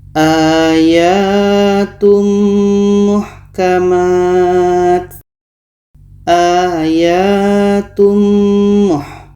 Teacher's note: tanwin kita masukkan ke mim dan diiringi dengan dengung. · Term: idgham bi gunnah